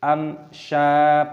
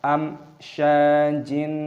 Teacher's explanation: panjangkan syin, mad thabi'i, ada tanda alif, panjangkan dua ketukan